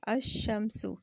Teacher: الف کو ہم نے ڈائریکٹ شین سے ملایا